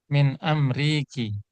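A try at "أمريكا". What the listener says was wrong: Min amri Amerika. Ada alif di situ ya?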